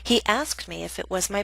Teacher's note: example B is a reported question a statement so we have falling intonation which means our voice goes down